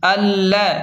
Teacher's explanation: حمزہ لام زبر اللام زبر ل، اللہ، لام پر شد ہے تو حمزہ کو لام کے ساتھ سختی سے ملائیں، اللہ اس طرح۔